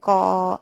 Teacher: क वर्ग कंठ से बोला जाता है क ऐसे गले से आवाज आ रही है